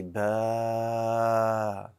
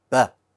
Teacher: the first one was too long, and the second one was short, very short. What you want to do is make it as long as it takes you to pronounce two letters with a haraka.